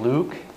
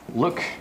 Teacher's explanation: tongue muscle back here is kind of really high here and it's long like in luke but here it's relaxed and it's a little bit shorter